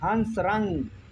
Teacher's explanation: अनुस्वार पूर्णतः स्वर नहीं पूर्णता व्यंजन नहीं। उच्चारण नाक से होता है